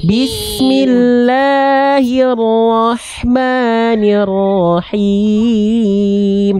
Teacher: Ha kecil. Him dari tengah tenggorokan nafas berbisik.